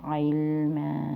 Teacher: توسط جسے کہتے ہیں۔ علما، میم 2 زبر ہیں لیکن میم کی آواز کو ہم روکیں گے اس لیے ایک زبر کے ساتھ اور 2 سیکنڈ لمبا کریں گے